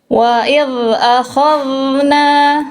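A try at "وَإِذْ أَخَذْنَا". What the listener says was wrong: Masih tebal. Wa il akhadna. Al, al. Oke, il, ul. Nah, itu harus tipis. Balik sini harus tipis. Wa il akhadna.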